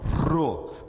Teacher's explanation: ele faz esse tremor na língua e ele é forte